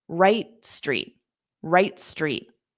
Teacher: that T on right, you don't need to push out the sound, just right street.